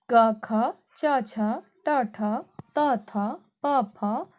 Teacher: प्रत्येक वर्ग के पहले और दूसरे वर्ण जो होते हैं वो अघोष व्यंजन कहलाते हैं।